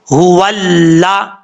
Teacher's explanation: जब वाव को लाम से मिलाएंगे तो अलिफ को छोड़ देंगे, इसको नहीं पढ़ेंगे